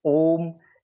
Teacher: अपन ओम का उच्चारण करते हैं, जैसे ओम, जो अधिक समय ले, इसीलिए इनको प्लुत स्वर की श्रेणी में रखा गया है।